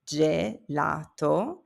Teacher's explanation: G before E or I becomes a soft J sound, like in gem.